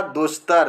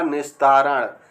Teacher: विसर्ग के साथ ता या था के मेल पर विसर्ग के स्थान पर दंती सा बन जाएगा